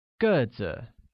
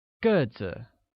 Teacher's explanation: pronounced with a falling tone on e, like 个子, while tall translates as 高高, with a high level tone on a.